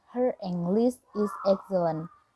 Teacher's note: It's like her English is excellent. When we say her, the R at the end of words still pronounces.